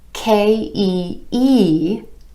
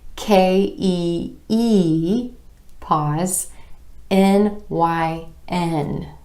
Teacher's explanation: My emphasis is falling on the E and the N at the end of these chunks of letters.